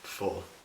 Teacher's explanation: people in the area have largely stopped pronouncing the RS after the vowels like in most other dialects in England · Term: rotic